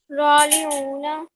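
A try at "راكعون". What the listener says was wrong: رالی تو نہیں ہے، کاف ہے. راکعون.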